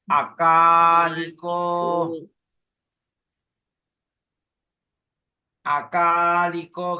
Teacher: Short A, long A, short I, long O.